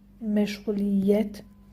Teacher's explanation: Y samitindən biri tələffüz zamanı düşəcək. 2 açıq, 2 qapalı.